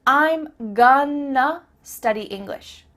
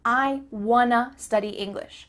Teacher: I'm gonna study English means I'm going to study English. That word to simply becomes a.